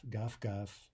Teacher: Note the devoicing of the final v there, right? Pronounced more like f